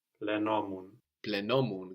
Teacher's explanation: We accent the ending, no?